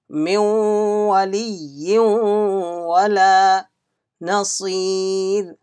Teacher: Wow came after Nun Sakin, there will be Idgham Naqis Idgham with Gunna.